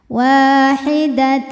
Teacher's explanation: ada hukum Idam bunah karena ada tanwin fathah menghadapi huruf w maka tanwin masuk ke w sertai bunyi dengung jadi ditahan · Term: idgham